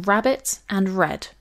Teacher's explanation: R is a rhotic consonant, and in English is most commonly realized as a post-alveolar approximant.